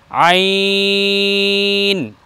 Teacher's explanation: আইন একটু চেপে বলতে হবে হলকের মধ্যখান থেকে